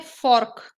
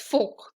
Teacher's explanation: हमें फॉर्क चाहिए, but the right pronunciation is फोक। The R is silent over here, right?